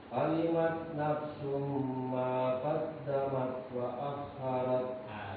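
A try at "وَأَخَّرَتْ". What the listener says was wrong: Huruf kha wa akharat.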